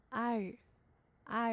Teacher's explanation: 在你舌头向后卷的过程当中，气流你可以感觉到是从舌头的两边出去的